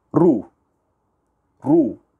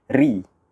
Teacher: Ra baris atas dan juga ra baris hadapan, tebal. Ra baris di bawah, ri, tipis. Okay? Ada dua yang tebal, satu yang tipis.